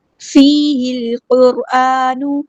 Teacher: قاف ہمارا heavy letter ہے، پورا ادا کریں گے۔ لام یہاں پر لام قمریہ، اس کو ہم ظاہر کریں گے۔ · را ہمارا ہیوی لیٹر ہے، پورا ادا کریں گے۔ الف پہ حرکات مد آئی ہے، 2 کاؤنٹس لمبا کریں گے، نون کی پیش کو ہم لمبا نہیں کریں گے۔